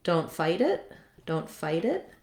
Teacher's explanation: when i link that t it becomes a flap it sounds more like a d